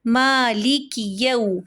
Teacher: یا کے اوپر زبر، اس کے آگے واؤ ساکن واؤ ماقبل زبر، ایسا واؤ لین کہلاتا ہے. واؤ لین کو اس کے زبر کو ذرا سا سنگل حرکت سے بالکل معمولی سا بڑھا دیتے ہیں، لمبا نہیں کرتے